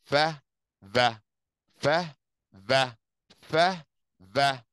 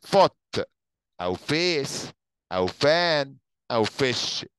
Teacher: الف اسمه voiceless، يعني صوت ما بيطلعش صوت عندي، لان انا النك بتاعتي ما بيحصلش فيها اهتزاز وانا بنطق الاف